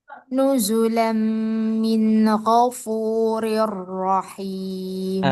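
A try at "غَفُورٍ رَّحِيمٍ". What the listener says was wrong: Rinya masih kurang tipis. Coba ghafuri rirro. Ya, ghafuri. Simak ya, ri. Kalau dia agak ke ghafurir rahim, ghafurir ri. Kalau tipis, ghafurir rahim. Jadi ri tipis dulu, baru ro sukun tebal, masuk ro fathah tebal. Ri, ro. Ro, jangan ro, jangan ri, ri.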